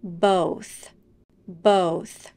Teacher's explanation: both in this word we also have the voiceless th sound do everything that you would for the voice th except don't engage your vocal cords and you won't feel any vibration